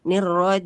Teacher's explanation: jagalah sifat syiddah huruf jim pada kata nirrojim